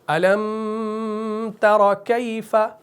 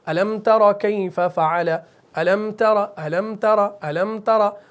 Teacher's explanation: تو سورہ فیل جب آپ پڑھتے ہیں تو آپ پڑھتے ہیں أَلَمْ تَرَ كَيْفَ فَعَلَ، أَلَمْ تَرَ، أَلَمْ تَرَ، أَلَمْ تَرَ. تو اس میں أَلَمْ غنہ اخفا بالکل نہیں ہوگا. کلیئر ہوگی بات.